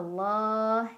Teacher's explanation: dibaca tafkhim karena huruf sebelumnya mim barisnya dhomah maka bacanya tebal Allah dengan menaikkan pangkal lidah ia tibikumullah Alif lamnya Alif Lam